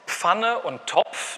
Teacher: Das sind Affrikaten, das ist im Wesentlichen eine Kombination aus einem Plosiv und einem Frikativ